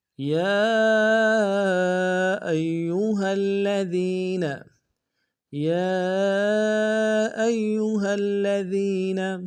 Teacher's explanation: یا میں یا کے اوپر کھڑا زبر ہے اور مد منفصل ہے، کم سے کم 2 الف دال میں کھینچیں گے۔ حمزہ کو یا کے سامنے لائیں گے، یا کے اوپر تشدید زور دیں گے۔